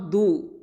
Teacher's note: இந்த துவாத் அப்படிங்கிறது ஹாஃபத்துல் லிசான். ஓகே, இது இஸ்தியாலா எழுத்து, ஹெவி லெட்டர்